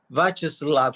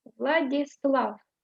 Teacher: The last syllable Slav is usually stressed. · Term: Slav is stressed